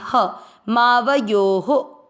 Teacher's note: यो में ओ की मात्रा तो विसर्ग को पढ़ेंगे ह